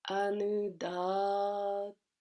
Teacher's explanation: It's a position we don't have in English. The D and the T, the tongue has to rest between the teeth